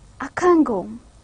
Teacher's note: that na sound in can, it gets mixed up with the one that is coming next, with ga. So when I will try to pronounce it rapidly, I would say akango. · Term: regressive assimilation